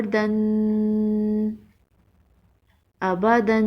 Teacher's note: دو زبر کو تنوین کہتے ہیں۔ تنوین کو غنہ کے ساتھ پڑھتے ہیں۔ تھوڑی دیر ناک میں آواز چھپا کر پڑھنے کو غنہ کہتے ہیں۔